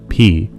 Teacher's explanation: If it involves both of your lips, like the sound P, that's going to be a bilabial sound. Bilabial meaning both lips.